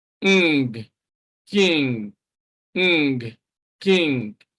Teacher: the sound we have here is the velar nasal